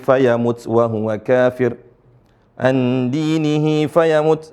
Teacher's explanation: ini yang disebut dengan mad Silah Mad yang dibaca panjang